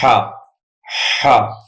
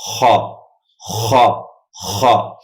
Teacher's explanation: زبان کی جڑ کو اوپر اٹھا کر اندر سے پریشر کے ساتھ آواز نکالیں، خا، خا۔ بیچ حلق سے ہا ادا ہوتا ہے اور آخر حلق سے خا ادا ہوتا ہے، خا، خا، خا۔